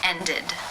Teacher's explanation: the e d is pronounced with the e as in sit and the D sound